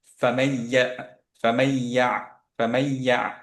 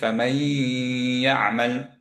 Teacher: ফামাই ধরে রাখলাম, কারণ হচ্ছে এখানে নুনের গুণনাটা চলে আসছে